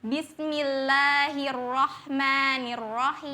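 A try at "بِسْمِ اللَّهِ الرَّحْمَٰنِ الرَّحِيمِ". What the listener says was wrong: sempurnakan harakat fathahnya ya, jangan me, me. Nanti, nanti beda itu, itu imalah.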